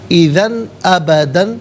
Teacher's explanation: وَلَن تُفْلِحُوا اِذًا ابداً، اذن میں دال پر 2 زبر کی تنوین، لیکن اس کے بعد حرف حلقی حمزہ آ رہا ہے، تو یہاں پر اظہار کے ساتھ پڑھا جائے گا، یعنی اخفا یا غنہ نہیں کیا جائے گا، نارملی اسے پڑھیں گے۔